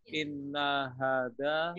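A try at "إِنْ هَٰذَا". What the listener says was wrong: Betul. Jawabnya bukan inna tapi in. In hada. Contohnya lafaz ini. Untuk mengetahui inna atau in ya, kita tengok sebelah kiri. Sebelah kirinya ada lafaz illa.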